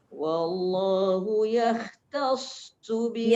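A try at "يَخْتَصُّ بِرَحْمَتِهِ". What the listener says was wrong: Ya tu nipis tapi kha tu tebal.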